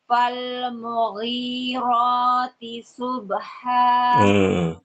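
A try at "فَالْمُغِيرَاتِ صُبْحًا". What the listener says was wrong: Shad kurang tebal. Fal-mughirati subha.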